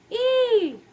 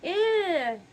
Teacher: we have to let the middle part of the tongue ascend to make an E vowel